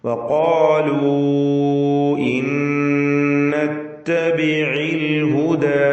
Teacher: ഇൻ എന്നതിലെ സാക്കിനത്തായ നൂൻ ശേഷമുള്ള നൂനിൽ ലയിപ്പിച്ച് മണിക്കണം. ഇത് ബിഗുന്ന കാമിൽ.